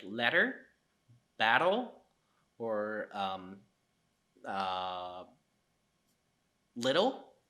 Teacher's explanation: those T sounds within the word is pronounced as a flap it's called flapping rule of T in English so these are